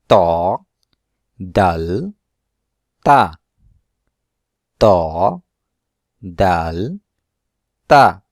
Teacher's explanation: জিহ্বার আগা উপরের দাঁতের গোড়ার সাথে মিশে উচ্চারণ হয়